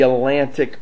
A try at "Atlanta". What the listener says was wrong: Atlanta. It's Atlanta. You said Atlantic.